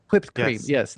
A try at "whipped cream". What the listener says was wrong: You're saying it weird. Why are you putting so much emphasis on the H?